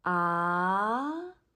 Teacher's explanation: Second tone is a rising tone, like a question tone.